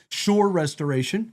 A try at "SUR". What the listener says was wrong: Sir. the T is silent.